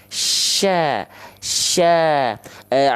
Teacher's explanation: jadi tengah lidahnya diarahkan ke langit-langit tapi enggak nempel